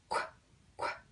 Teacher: it's almost like a breath at the very end of it.